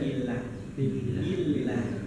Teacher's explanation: Ujung lidah bertemu dengan langit-langit bagian depan. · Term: lam